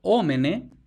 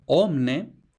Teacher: Entonces, latim vulgar omene, el primer paso es la síncopa de la vocal postónica, por tanto, omne.